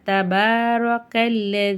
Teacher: தபாரக்கல்ல ரா மேல ஜபர் இருக்கு ராவ நம்ம வல்லினமா ஓதணும்